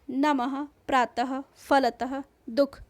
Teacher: इसका उच्चारण आधे ह की तरह होता है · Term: विसर्ग